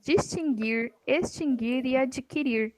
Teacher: As palavras distinguir, extinguir e adquirir não tem o U pronunciado.